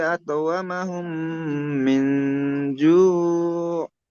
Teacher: মিম সাকিনের পরে মিম আসলে মিমকে মিমের সাথে মিলিয়ে গুণনা করে পড়তে হয় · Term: ঈদগামে স্বাভাবিক